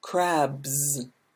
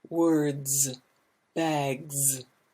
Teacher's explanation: one however there's a voice at the end so this is if it ends in a voiced sound like boo then we have a z